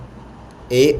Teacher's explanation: ए और ऐ का उच्चारण किया जाता है। कंठ तालव्य से अ और इ के योग से ए का निर्माण होता है